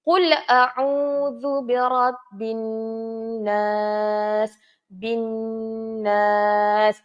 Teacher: dengung hukum dia kita baca sebanyak dua harakat cara bacaan dua harakat